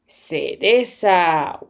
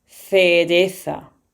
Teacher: In Canary Island or in America, these syllables, they read S. So, when they have the C and the E together, they read se.